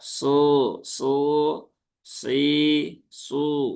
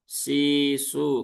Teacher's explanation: Huruf sod dia keluar dari ujung lidah ya, ujung lidah mendekat ke gigi seri ya, nah, gigi seri yang bawah. Ya, mendekati gigi seri bawah su si su ya, bukan si su.